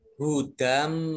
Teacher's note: Jadi masuk dengan mendengung. Dan mim tasdid ini dibaca mendengung, ditahan selama kurang lebih 2 harokat. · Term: idgham bi gunnah